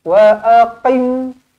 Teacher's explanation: Qaf dia lebih dalam lagi. Qaf dia dekat anak tekaknya, lebih dalam lagi.